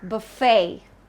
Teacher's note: So the stress is on the second part, buffet.